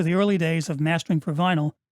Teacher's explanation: The upwards inflection of the last two words clearly leads into a follow-up comment which would now be gone.